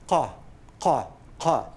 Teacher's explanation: It's like K, but further back in the mouth. The back of your tongue touches the uvula and produces a sound that's not ka, but ka. · So what is written as Q, if you do it in IPA, this is a sound that's known as a uvular stop